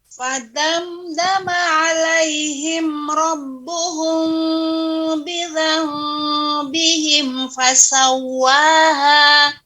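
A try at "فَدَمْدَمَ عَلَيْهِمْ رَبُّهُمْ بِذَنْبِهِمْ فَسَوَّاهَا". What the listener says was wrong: Akan tetapi ya antara kedua bibir nempel Ibu ya. Kalau kurang nempel kurang juga ya. Walaupun ada sebagian ulama yang adanya furjah, adanya sedikit celah ya. Akan tetapi yang kita kuatkan ya, kita lebih menguatkan tetap ditempelkan, bukan berarti seperti samar ya. Rabbuhum ditempelkan ya, tapi tidak ditekan.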